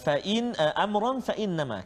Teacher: itu ikhfa hakiki, kena dengung. Amran fa, dua harakat, maksudnya jangan kita lambat atau jangan kita tercepat.